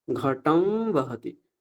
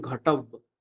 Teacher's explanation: অনুস্বার তুলে দিতে হবে। আর এখানে একটা অনুনাসিক বকার কল্পনা করে উচ্চারণ করতে হবে।